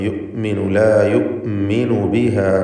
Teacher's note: യുഅ്മിനു എന്നതിൽ ഹംസ വ്യക്തമാക്കി ഷിദ്ദത്തോടെ ഉച്ചരിക്കേണ്ടതാണ്.